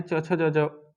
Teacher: च छ ज ज वाला, इसका उच्चारण दोस्तों तालु से किया जाता है